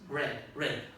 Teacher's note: In retroflex we don't have any in Spanish, they have many in Chinese, for example, but you have one in English, they have one in American English, is the R, red, red, red. When you pronounce, you put the tip of the tongue backwards, and that's why it's called retroflex